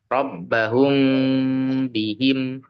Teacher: masih menyempurnakan seperti mim mati bukan ba yang mati seperti itu ya tidak masuk ke makhrajnya apa tidak masuk ke huruf ba walaupun makhrajnya ba dan mim sendiri ini sama jadi rbahum seperti mim yang dipanjangkan atau ditahan dulu dua sampai tiga harakat merupakan bacaan ikhfa syafawi baru masuk ke hum bihim yang lainnya ini mim sukun ketika bertemu selain huruf mim dan ba maka dibacanya adalah izhar syafawi. · Maka dibaca samar kemudian disertai dengan dengung dua sampai 3 harakat.